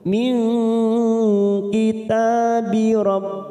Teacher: ikhfa Hakiki kita samarkan tiga ketuk